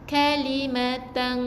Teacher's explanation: Jadi kita tambah G, sengau sikit. Jadi hujung lidah kita tu jangan tekan ke langit atas. Jadi kita akan ada ruang udara yang menyebabkan dia akan jadi sengau. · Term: ifak hakiki